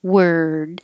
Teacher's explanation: the vowel is er and it's not really a vowel it's just making the r noise